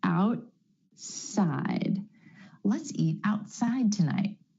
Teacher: Instead of outside, outside. The tongue stays up for the T and goes straight into the S sound. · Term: held T